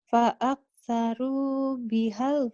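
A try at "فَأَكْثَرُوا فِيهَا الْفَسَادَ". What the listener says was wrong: Pi, bukan bi, pi. Pi, F Fanta.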